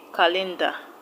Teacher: calendar is a noun so the stress will go to the first syllable